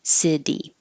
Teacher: In the word city, the T is between two voiced sounds, but it's in the unstressed syllable, so it changes to a D.